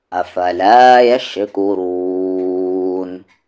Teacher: را کو ہیوی کریں گے اور لاسٹ میں مد عارض ٹیمپرری مد